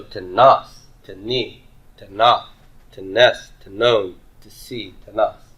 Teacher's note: The accent is on whatever the second syllable is, if we get a second syllable.